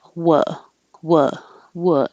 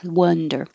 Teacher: wha is very low in the back